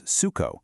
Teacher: an o at the end of a word, at least in many dialects, often softens into an oo sound as well. And that's exactly how s u c o maps perfectly to suco. · The U in Portuguese sounds like a deep oo. Then, the C right before an O is pronounced as a hard K.